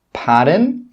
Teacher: Note here when I say this phrase, my intonation or my pitch goes up